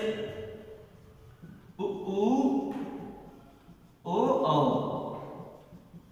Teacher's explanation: व्रतमुखी का मतलब क्या होता है? ऐसे स्वर जिनका उच्चारण करते समय हमारे जो होंठ हैं वो क्या हो जाए? गोलाकार हो जाए।